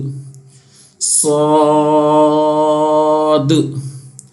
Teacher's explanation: اب صاد جو ہے یہ حروف مستعلیہ ہے، اس کو موٹا پڑھیں گے، اس کو جو ہے اس طریقے سے سو سو سو، آواز جو ہے وہ منہ کے اندر رہے گی، ٹھیک ہے، لیکن اس کو ہونٹوں کو منہ کو ہمیں گول نہیں کرنا ہے صاد ادا کرنے کے ٹائم.